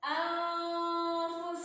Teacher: Cara bacanya antara n dan eng. Jadi samar, n enggak, eng juga enggak. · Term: ikhfa awsat